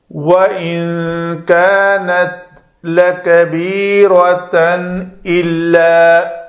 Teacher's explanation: نون ساکن کے بعد اگر حروف اخفاء میں سے کاف آ جائے تو اس کو ان نون کے مخرج کو چھپانا ہے۔